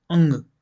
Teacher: अंग में आपका नाक से हवा निकल रही है ना, तो ये नाक से बोले जाते हैं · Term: नासिक्य